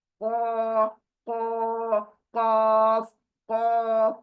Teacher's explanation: एक सिंपल क, सिंपल हिंदी वाली क, वो लास्ट की है, और एक को हलक के अंदर जो जुबान है छोटी, वहां से निकलेगा। खो ले को के।